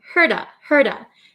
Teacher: the T becomes a flap T so it sounds like a soft D sound